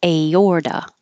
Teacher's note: the A and the O next to each other go in separate syllables, so you hear each of them